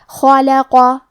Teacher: آخری میں قاف حروف تفخیم میں سے ہے تو ہم قاف کو موٹی آواز میں پڑھیں گے. اور قاف کی ادائیگی زبان کے جڑ اور تالو کے نرم حصے سے ہے